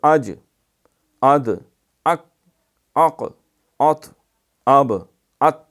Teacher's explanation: تو ان کو ادا کرے تو ان میں ایسی سختی ہوتی ہے کہ آواز بند ہو جاتی ہے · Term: حروف شدیدہ, شدت